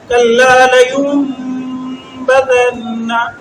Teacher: نون کے بعد با آ رہا ہے تو لہٰذا اس کو میم کے ساتھ بدل کر غنہ کریں گے تو کل نون نہیں پڑھیں گے، نون ساکن ہے، نون نہیں پڑھیں گے تو غنہ کریں گے، میم پڑھیں گے۔ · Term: اقلاب